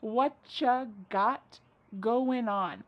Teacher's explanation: Whatcha is what plus you. U becomes cha.